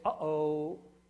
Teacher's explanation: And what I decided it should mean is something that I think is very natural to come up with, which is a glottal stop. The glottal stop is this sharp break that you hear.